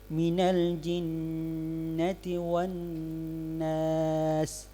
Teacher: al-gunna, ya ini suara yang melewati rongga hidung